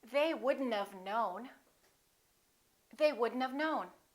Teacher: we pronounce the D and then we connect the D next to the N and then the O disappears but the tea also disappears watch this we say couldnt and